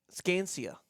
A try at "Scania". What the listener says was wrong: I think it's just Scania. Scania. You put an extra C in there. It's your lisp. I think it's Scania.